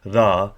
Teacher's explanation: we have ra with the sort of increase in tone at the last A